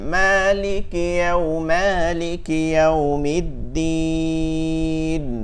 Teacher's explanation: মালিকি, লিকি, লিকিতে টান দেওয়া যাবে না, দেখেন মালিকি মালিকি ইয়াউমিদ্দিন।